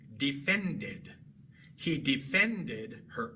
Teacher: El verbo es defend, termina en d y por eso al agregar e d en tiempo pasado se pronuncia tanto la e como la d.